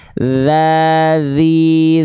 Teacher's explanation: tuh yang ini dua paling depan Nah ini gigi seri nah ujung lidah kita disentuhkan bukan ke gigi serinya tapi ke ujungnya ke sininya nih ah ke ujungnya nih sehingga ketika kita lafalkan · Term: huruf tsa